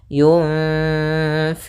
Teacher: Kemudian di sini ada bacaan ikhfa pada lafal nun mad yang bertemu dengan fa, yaitu cara membacanya adalah nunnya kita samarkan kepada huruf fa, kemudian ditahan dengungannya atau gunnahnya. Sepanjang 2 harokat.